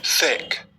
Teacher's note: make loose contact between the tongue and the back of the teeth और push air through the gap